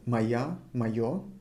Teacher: Instead of O, I'm saying A.